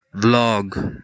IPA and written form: vlɒɡ (vlog)